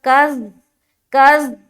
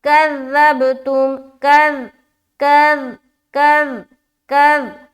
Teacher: अच्छा, ज़ाल के बारे में ये ख्याल रखे कि ज़ाल को अदा करते वक्त कज़, कज़ इस तरह का साउंड नहीं आएगा, वरना हर्फ ही चेंज हो गया और आप गलत पढ़ रहे हैं, ऐसा साउंड नहीं आएगा। ज़ाल में सीटी की आवाज नहीं आएगी, ज़ाल को बहुत ही नरमी से अदा किया जाता है और बगैर सीटी वाली है।